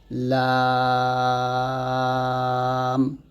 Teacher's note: তালু থেকে পৃথক হবে জিহ্বার কিনারা থেকে সহজে উচ্চারিত হবে এবং আওয়াজ জিহ্বার সম্মুখ দিয়ে বের হওয়ার পরিবর্তে দুই পাশ দিয়ে বের হয় · লাগবে এবং লামটা সিফাইলে ছয়টা বাতাস বন্ধ আওয়াজ অল্প জারি থাকবে হরফ উচ্চারণ পাতলা হবে জিহ্বার মধ্যখান তালু থেকে পৃথক হবে জিহ্বার কিনারা থেকে সহজে উচ্চারিত হবে এবং আওয়াজ জিহ্বার সম্মুখ দিয়ে